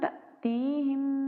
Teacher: حمزہ پہ جزم آ جائے تو حمزہ کو جھٹکا دیا جاتا ہے۔ تَأْتِيهِم مشدد میم ہے تو یہاں پہ ہم غنہ کریں گے۔